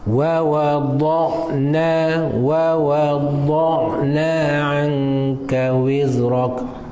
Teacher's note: Dot istitalah, suara dia meleret di tepi lidah. Di tepi lidah, pangkal lidah sehingga ujung lidah.